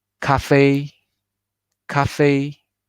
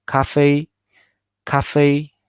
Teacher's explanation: So fei is higher than ka, and the fei is longer, right? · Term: light stress